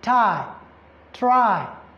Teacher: you start with a and then you end with e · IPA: /ai/